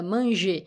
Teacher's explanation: la dernière syllabe devient la syllabe forte